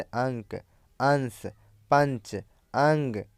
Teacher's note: पर अनुस्वार के उच्चारण में नाक से अधिक सांस निकलती है और मुख से कम